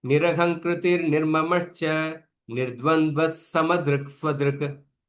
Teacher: But when I'm pronouncing continuously without break, because the visarga is followed by sakara, then the visarga is pronounced like sakara